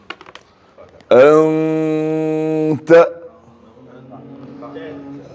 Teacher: انتا نہیں بولنا, نون کے مخرج کو زبان نہیں لگانا. انت, سمجھ میں آنے کے لیے آپ زبان کو کہیں بھی نہیں لگانا, بیچ میں رکھیے. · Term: اخفاء